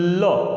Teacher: तो उस कंडीशन में होता क्या है, अंदर से जो ऊष्मा निकल रही होती है वो पार्श्व होकर के, बाईपास होकर के, बीच में जीभ खड़ी हुई है और आधी वायु इधर से और आधी वायु इधर से पार्श्व होकर निकलती है, इसीलिए ल को पार्श्विक व्यंजन कहा जाता है।